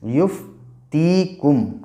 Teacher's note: یا ساکن سے پہلے تا کے نیچے زیر ہے اس لیے یا مدہ ہوگا اور اسے تھوڑا کھینچ کے پڑھیں گے